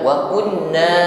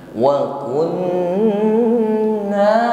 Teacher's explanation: Nun tasydid ditahan, jangan keburu, sempurnakan dengungnya, karena di sini huruf nun tasydid ini ukuran dengungnya akmal, dengung yang paling sempurna. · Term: ghunnah musyaddadah